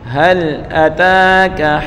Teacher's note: تا کے اوپر کھڑی زبر ہے، ایک الف مقدار کھینچ کر پڑھیں گے